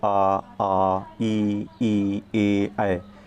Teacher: जिन स्वरों के उच्चारण में ओंठ वृत्तमुखी यानी गोलाकार नहीं होते उसे हम आवृतमुखी कहते हैं। आप बोल के देखेंगे ना, जैसे आ, ई, ए, तो हमारे होंठ जो है उसमें गोलाकार नहीं हो रहे हैं, तो हमारे ये आवृतमुखी हो जाएंगे।